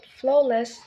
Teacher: the stress falls on the first syllable which is a common pattern for two syllable nouns and adjectives in English